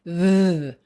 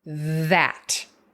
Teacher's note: So the voiced would be th. We put the tip of the tongue between, we call it interdental, between our two teeth, or our top and our bottom teeth, and we turn on our voice, like in the word that.